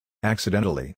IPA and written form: ˌæksɪˈdentəli (accidentally)